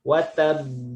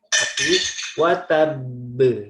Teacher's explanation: dia ada ba-nya bertasydid maka ditahan. Wa tabb. Bukan wa tabb.